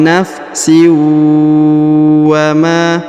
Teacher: Huruf sinnya melebur ke huruf waw. Huruf sin atau tanwin in melebur ke huruf waw, ditahan dan ditekan. Wa nafsi ya, didengungkan ya.